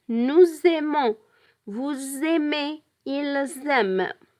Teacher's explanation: We pronounce the Z sound because we make liaison between the S and the A of the verb aimer.